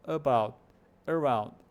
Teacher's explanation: o schwa está no começo, está no A.